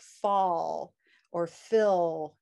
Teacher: the dark l is at the ends of syllables like fall or phil right and it's a vowel sound